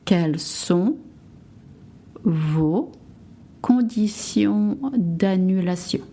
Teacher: the TI from condition et annulation is pronounced s, not sh